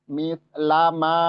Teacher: Itu sama-sama bertemunya ujung lidah dengan ujung-ujung gigi seri atas. Mislama ma-nya panjang 4 sampai 5 harokat